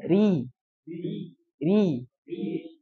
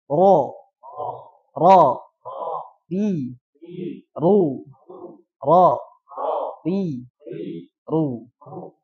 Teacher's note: Ro ketika kasroh bacanya tipis, ri. Paham ya?